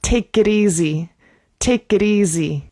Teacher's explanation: When we have a t in between two vowels, we use the flap t, especially in my accent in US English.